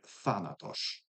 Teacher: in modern Greek this has become good old interdental fricative th